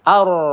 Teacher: Ro sukun sebelumnya ada harokat fathah, maka kita baca tebal ya.